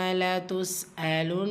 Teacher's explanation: நூன் முஷத்ததா again குன்னா செஞ்சு ஓதணும்.